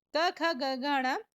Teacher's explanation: क वर्ग का उच्चारण स्थान होता है कंठ, कंठ, कंठ से इसको बोलते हैं, तो इसको कंठस्थ वर्ण भी हम बोल सकते हैं।